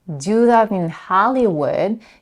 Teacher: She raises her intonation a bit and stresses on the first syllable in Hollywood.